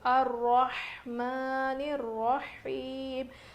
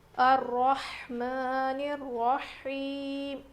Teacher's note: ہا کی آواز بالکل ظاہر ہونی چاہیے، رو موٹا پڑھیں گے، کھڑا زبر ہے میم کے اوپر.